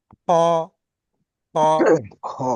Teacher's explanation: উচ্চারিত হয় এটা জীবের কণ্ঠনলীর মাঝখান দিয়ে খ খ যেখানে خا আমাদের ছোট্ট আলজিভ আছে ওখান দিয়ে উচ্চারিত হয়